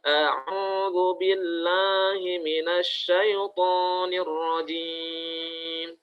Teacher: kesalahan dalam membaca isti'azah pada kaidah mad itu seringkali masuk ke rongga hidung